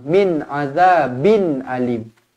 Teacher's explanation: nun mati bertemu dengan Ain tanwin selari bertemu dengan Hamzah izhar halqi jelas dan terang